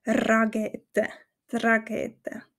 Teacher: Wir haben nur den Ch-Laut im Hals. Auch wichtig zu wissen ist, dass wir das R rollen